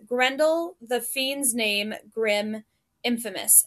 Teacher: So we have Gren and fiend. Those are the stressed syllables, and Dul, the name, are the unstressed.